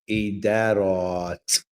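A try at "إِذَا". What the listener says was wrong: So you're extending this a lot more than you're extending this. But these two should be exactly the same. So you're saying like idarat, idarat. To say that you would be removing the sure you're not saying ida, yeah. ida, idarat.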